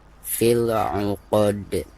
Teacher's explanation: Terus posisinya ada di ujung bacaan atau ada di ujung ayat ya. Maka cara membacanya itu harus dipantulkan dengan pantulan yang lebih jelas ya, karena dihukumi qalqalah kubro.